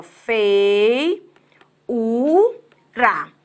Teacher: no fei, o e é uma vogal. O i, na verdade, é uma semivogal. Já que eu tenho, na verdade, vogal e semivogal, eu não tenho, na real, um hiato. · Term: falso hiato